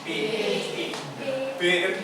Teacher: B ditahan dulu dengan dua bibir atas dan bibir bawah